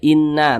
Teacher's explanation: musyaddadah ada Nun bertasydid nah panjangnya itu dua harakat jadi digunahkan cara membacanya itu digunahkan kita tahan suaranya kita panjangkan panjangnya itu dua harakat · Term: ghunah musyaddadah